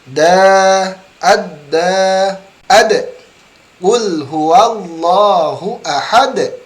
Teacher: huruf dal memiliki istimewa ketika sukun mantul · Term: pantulan huruf dal